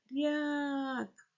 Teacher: й заховалося за букву р і буква р стала розмовляти м'якенько